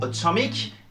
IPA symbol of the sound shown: ə